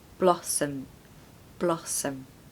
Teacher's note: Now the first syllable has a very strong short O